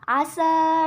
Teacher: mad bertemu dengan hamzah di lain kalimat dibaca 2-2,5 alif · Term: mad jaiz munfasil